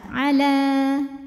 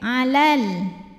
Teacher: Maka lamnya jika berhenti panjang 2 harokat ala. Tetapi dibaca panjang 2 harokatnya hanya jika berhenti. Sedangkan ketika wasol atau dilanjut, madnya ini gugur, lamnya pendek, alal. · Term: mad tabi'i